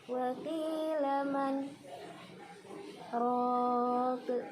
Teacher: Saktah yaitu berhenti sejenak kira-kira satu alif lamanya atau dua ketukan tanpa mengambil napas dan untuk melanjutkan bacaan selanjutnya.